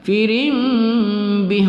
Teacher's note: ra baris dua di bawah bertemu dengan ba, kita baca berdengung pada iqlab